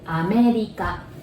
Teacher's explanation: Again, R becomes L sound, right?